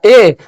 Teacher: ए बोलिएगा ए, तो कंठ और तालु दोनों का उच्चारण होगा, यानी कि ए का उच्चारण स्थान कंठ प्लस तालु होता है। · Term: कंठ तालव्य